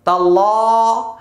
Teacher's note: নুন আইনজের নির, মিম জবর মা, নি'মা, তালাম জবর তাল, লাম খারা জবর লা। তাইলে আল্লাহ শব্দের পূর্বে জবর আসছে, তাই মোটা হবে।